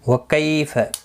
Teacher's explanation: کئی یا لین ہے، تھوڑا نرمی کے ساتھ کھینچ کر ادا کریں گے